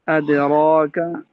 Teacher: ادراکا میں حمزہ باریک ہے، دال بھی باریک ہے